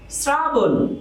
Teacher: আমরা যদি আরেকটি উদাহরণ দিই, শ্রাবণ, তো এখানে আমরা দেখতে পাচ্ছি তালব্য স র এর সাথে রফলার সাথে যুক্ত অবস্থায় আসছে, সুতরাং এই তালব্য স দন্ত স হয়ে যাবে